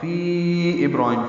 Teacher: ابراہیم میں با ساکن پہ قلقلہ